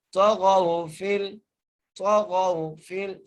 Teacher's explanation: طا کو موٹا کر کے پڑھیں گے، غین کو بھی موٹا کر کے پڑھیں گے، غین کو واو سے ملائیں گے.